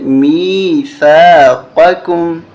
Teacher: یہاں قاف ہے اور یہاں کاف دونوں کو واضح کرنا ہے اور ثا پہ زبان باہر نکالنی ہے